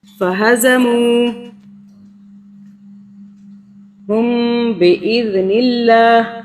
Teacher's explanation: میم پہ ہم نے غنہ کیا 2 سیکنڈ کے لیے، کیونکہ میم جزم والے میم کے آگے اخفاء کا حرف ہے